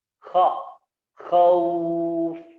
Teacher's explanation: Kha, ingat ya, ada garukan di sini. Di ujung tenggorokan, ya.